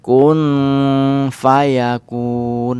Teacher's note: dibaca Kun terlebih dahulu tapi jangan lupa berdengung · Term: ikhfa ausath